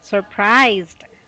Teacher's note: There's a zd ending sound.